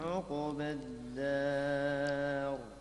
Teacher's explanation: لابد من ضم العين، ضم العين وسكون القاف مع قلقلة